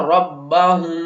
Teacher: اگر میم ساکن کے بعد با ہوگا تو میم کے اوپر ہم غنہ کر کے پڑھیں گے